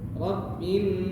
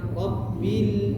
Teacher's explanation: lam itu posisinya tidak sama dengan nun dan tidak mengalirkan suara ke hidung. Ini posisinya ujung lidah nempel ke langit-langit yang sejajar. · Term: lam sukun